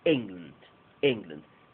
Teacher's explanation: otra vez tenemos una palabra de dos sílabas toda la fuerza de voz en eng eng cuando ya vamos a decir Land no hay aire entonces